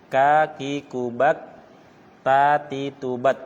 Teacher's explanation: Kalau ka sama ta nafas mengalir, tapi suara tidak mengalir. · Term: syiddah